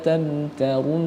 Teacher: Nun lagi yang bertasydid, gunnah musyaddadah, harus didengungkan